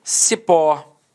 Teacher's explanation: Repare que a sílaba tônica é a última e ela é terminada em O. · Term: oxítona